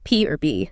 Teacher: Notice how your lips come together completely. That's a bilabial sound.